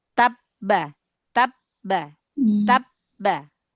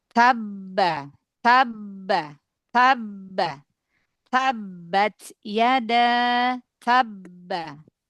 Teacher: Seperti ada efek qalqalah yang enggak bisa keluar gitu karena ee melebur ke huruf ba.